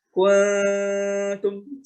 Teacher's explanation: Menyebutkan n tapi lidahnya atau makhrajnya sudah ke huruf ta. Kuntum, samar itu maksudnya samar antara n sama ng gitulah ya, kurang lebih samar. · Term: Ikhfa hakiki